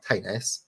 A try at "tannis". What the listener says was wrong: tis the way you're saying tenis and not tannis it's just like throwing me a little bit